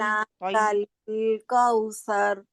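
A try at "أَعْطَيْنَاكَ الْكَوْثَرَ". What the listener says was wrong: तई ता को भी तई ना कल कल कौसर। कल नहीं है ना, कल नहीं है, लंबा नहीं करना ना इसको। कल कौसर। कल कल को जल्दी क्या जाना ब्रीक है स्माली और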